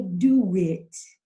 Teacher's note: that's a W that's connecting the O in due to the I in it